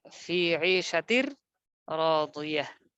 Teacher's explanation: তারপর হচ্ছে আরেকটা উদাহরণ ফাহুয়া ফি ঈশাতিন, তানবিন আছে, তানবিনের পর র লাম, এই দুই হরফ, আট হরফ, দুই হরফের এক হরফ চলে আসছে, যেমন র এসেছে, তাহলে গুন্না ছাড়া তাসদিদ দিয়ে মিলিয়ে পড়তে হবে। তা র দুইজের তীর, ফি ঈশাতির রাদিয়াহ, গুন্না হবে না। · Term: ইদগামে বেলাগুন্না